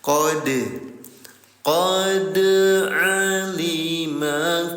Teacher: Perhatikan lagi bunda. Kondisinya dal dalam keadaan sukun. Namanya qol, artinya qol-qolah hukum tajwidnya. Cara bacanya 0 harokat dipantulkan.